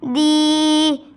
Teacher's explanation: دال ادا ہوتا ہے زبان کی نوک اوپر کے سامنے والے دانتوں کی جڑ سے لگے۔ یا ساکن حرف ہے، یا ساکن سے پہلے زیر ہو تو یا مدہ ہوگی۔